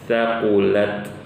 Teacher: sifat hams yang dikeluarkan pada huruf ta ini hanya desisan yang keluar dari ujung lidah